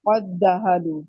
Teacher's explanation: आप डायरेक्ट ये जो इसके ऊपर जो होती है तशदीद होती है, अगले दाल के ऊपर तशदीद डाल देते हैं, इसीलिए तशदीद डाली जाती है। पहला दाल अदा नहीं होता, डायरेक्ट काफ को इस दाल के साथ मिला देंगे